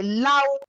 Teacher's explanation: The R is high tone. And the U, the tone of the U is dropped off following the vowel A, U.